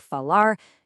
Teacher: when the R is at the very end of a word, like falar, you pretty much just drop it. It goes silent.